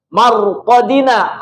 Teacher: ro yang sukun sebelumnya fathah, pasti tafhim